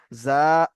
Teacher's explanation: এটি হল আলিফ মাদা একে এক আলিফ পরিমাণ টান দিয়ে পড়তে হবে